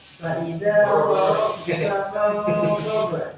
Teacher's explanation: Peru tebal ya, ghain tebal dan rukhwa. Mengalir suaranya.